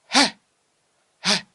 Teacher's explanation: Quand tu prononces cette lettre, il y a les souffles qui sortent de ton être.